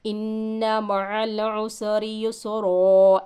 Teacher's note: एक ज़बर के साथ अलीफ लगा कर वक़्फ़ करेंगे